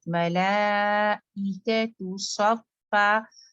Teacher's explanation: मला को अच्छी तरीके से ला को खींचे, ई बिल्कुल सेपरेट, मलाइकतु सफ़ा, स्वाद हैवी सौ, स्वफ़ा फौरन फा के लिए लाइट हो जाए।